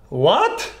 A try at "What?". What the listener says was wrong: Maybe a bit toned down on the what, okay.